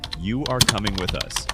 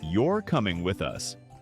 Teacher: Voice rises on coming and falls on us. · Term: Natural intonation